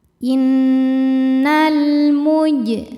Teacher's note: Selanjutnya ada alif lam qamariyah sebab alif lam menghadapi huruf qamariyah yaitu mim, maka lam dibaca izhar atau jelas · Huruf jim sukun dihukumi qalqalah sughra karena jim sukunnya sukun asli dan ada di tengah bacaan. Cara bacanya jim dipantulkan dengan pantulan yang kecil.